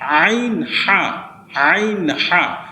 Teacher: হলকের মধ্যখান হইতে আইন হা এই দুইটা হরফ উচ্চারণ হয় · 2 নম্বর মাখরাজটা হচ্ছে আইন হা, এটা হচ্ছে হলকের মধ্যখান থেকে আইন হা